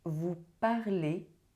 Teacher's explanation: you do not pronounce the Z, you pronounce it E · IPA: [e]